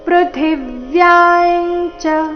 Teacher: ಥಿ ಮಹಾಪ್ರಾಣ ರಸ್ವ ಬರಬೇಕು, ಅದ್ರ ಮೇಲೆ ಆಘಾತ. ಯಾ ದೀರ್ಘ ಹೇಳಿ ಅನುಸ್ವಾರದ ಉಚ್ಚಾರಣೆ ಅನುನಾಸಿಕ ಯ ರೀತಿ, ಮುಂದೆ ಚ ಬಂದ ಕಾರಣ.